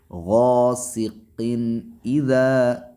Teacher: قاف کے نیچے جو تنوین ہے اس تنوین کا اظہار ہوگا۔